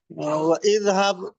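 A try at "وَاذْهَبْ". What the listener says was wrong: ওয়াজহাব। হামজাটা তো হামজাতুল ওয়াসলি, এটা মিলে যাবে।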